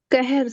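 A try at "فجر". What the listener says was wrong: नहीं, ना तो क है ना ह है। फजर, फजर। ऊपर एक नुक्ता है, दूसरा होता तो वो काफ होता, फिर आप ठीक थे। और नीचे अगर नुक्ता ना होता तो वो ह होता, तब भी आप ठीक थे, तो वो कहर हो सकता था।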